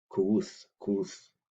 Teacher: And with the Y there, there's a rounding of the lips, and try to pronounce the letter I, modern English I, but by rounding your lips.